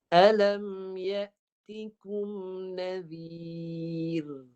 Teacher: Ra-nya dibaca nipis ketika mati. Sebelum ra itu huruf zal baris bawah. Ya. Jadi ra-nya baca nipis.